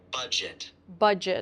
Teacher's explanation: Make sure you say j and not ch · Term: j sound